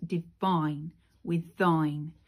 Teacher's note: those are clear masculine strong rhymes because these are stressed syllables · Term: masculine rhyme